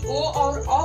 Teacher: ओ और औ का उच्चारण हम कंठ प्लस ओष्ठ, कंठ और ओठ दोनों को मिलाकर करते हैं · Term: कंठ ओष्ठम